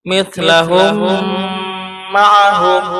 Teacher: Ketika ada mim sukun ketemu mim. Nah, ini pun termasuk gunnah aridhiyah, ditahan 3 harokat. Jadi jangan terburu-buru membacanya. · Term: idgham mithlain